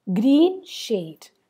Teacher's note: green and shade are both stressed syllables